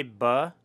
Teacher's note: you say with both of your lips it's bilabial